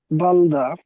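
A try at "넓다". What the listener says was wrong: আপনি কি এখানে যে বিউব, বিউব কি উচ্চারণ করছেন না? এই বিউব সাইলেন্ট, সাইলেন্ট,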